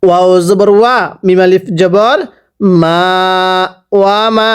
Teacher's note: ওয়া মা, এক আলিফ টান দিব, জবরের পরে খালি আলিফ এক আলিফ টানতে হয়।